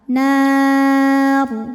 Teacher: Karena sebelum ro yang disukunkan ada huruf berbaris fathah ya. Maka rnya tebal nar. Namun jika diteruskan rnya tarqiq karena barisnya kasrah. · dan ketika berhenti ro ini disukunkan, dibacanya secara tafkhim